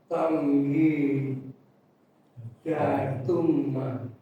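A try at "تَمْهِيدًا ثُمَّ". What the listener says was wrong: Tamhidam. Nah, ini nggak ada ya, ini ayat. Ini ayat, berarti di sini nyambung ya, Pak. Jadi jangan dibaca tamhida summa. Nah, jangan. Ngikutin harokatnya. Tamhidam summa. Tergantung ya ini huruf berikutnya apa.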